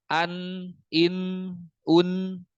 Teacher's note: Ujung lidah menempel dengan langit-langit depan.